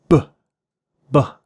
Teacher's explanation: The B sound is called a bilabial stop. And when you're doing it, you're putting your lips together, b, b, and you're stopping the air and then releasing it all of a sudden.